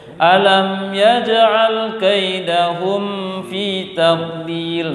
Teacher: Yang rentan adalah mim sukun bertemu dengan fa. Mim sukun bertemu dengan fa itu sering terdengungkan.